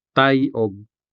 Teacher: ends in the diphthong I, formed by the vowel A and the semi-vowel Y